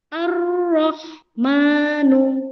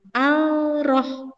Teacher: Kalau idgham syamsiyah alnya tidak terbaca.